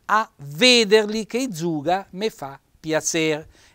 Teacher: metterci un bel accento tonico fonico chiuso sulla prima e